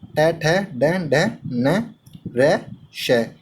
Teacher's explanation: इन सभी वर्णों का उच्चारण स्थान मूर्धा होता है। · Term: मूर्धन्य वर्ण